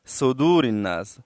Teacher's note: सद को सीन की तरह अदा करते हैं यह सद है थोड़ा मोटा पड़ा जाता है और दाल वा पेश दो में वावे मद्दा है और रा